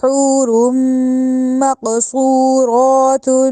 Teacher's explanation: اب تا دو پیش تن جو ہے تنوین آئی ہے اور یہاں پہ ہم نے غنہ کرنا ہے